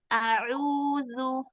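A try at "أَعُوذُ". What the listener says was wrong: Nah, suara di bibir ya, bukan di hidung.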